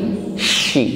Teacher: huruf shin ini memiliki sifat tafasyi, yaitu meluasnya udara di dalam mulut